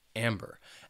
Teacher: which has 2 syllables and the stress is on that first syllable